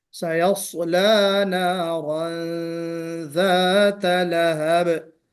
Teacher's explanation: نارن نارن ذات، اس میں غنہ کرنا چاہیے، یعنی اخفا، جس کو اخفا والا غنہ ہم کہتے ہیں، تو یہاں پہ اخفا بھی نہیں ہوا، تو ہمیں غنہ کرنا ہے، اخفا کے ساتھ غنہ کرنا ہے